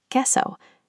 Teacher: The q u pattern silences the u, leaving us with a pure K sound.